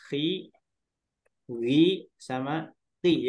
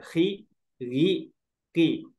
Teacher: di huruf yang kasroh ini huruf tebal ada yang jadi berkurang kadar ketebalannya, jadi tipis